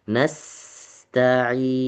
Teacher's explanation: Tahan sedikit di huruf sin yang sukun. Biarin dulu, biarin dulu anginnya keluar. Nasta'in. Sedikit lebih lama ditahan.